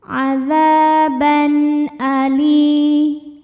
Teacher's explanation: ada hukum izhar halqi karena ada tanwin fathah menghadapi huruf halqi atau huruf tenggorokan yaitu Hamzah maka tanwin ini dibaca dengan jelas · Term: idhar halqi